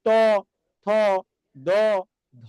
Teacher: দাঁতকে স্পর্শ করছে বলে এটার নাম বলছি কি দন্তধ্বনি